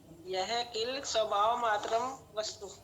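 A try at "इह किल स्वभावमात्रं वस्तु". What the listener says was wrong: यह नहीं, इह इह।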